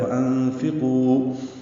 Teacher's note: وجہ سے اخفا ہے، یہاں پہ فا کے نیچے زیر ہے، قو واو مدہ ہے، وانفقوا 2 حرکات لمبا کریں گے، قاف کو پر پڑھیں گے